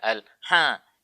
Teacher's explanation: harus keluarnya di tengah tenggorokan saja. Tidak boleh ada yang keluar di hidung. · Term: huruf ha